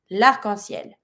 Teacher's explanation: Same as usual, it's masculine, but because arc starts with a vowel, I'm going to be saying l'arc-en-ciel. I'm skipping my E from le to be able to link it.